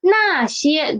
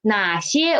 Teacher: 那 些 those it is a fourth tone 哪 些 which it is a third tone